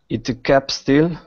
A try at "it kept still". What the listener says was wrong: Okay, but again, you're saying itta. Itta, instead of it. It kept still. It kept still.